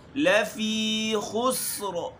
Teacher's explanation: غنّے اور اخفا کے درمیان۔ لفی خسر، لافی لمبا نہیں کرنا، لافی نہیں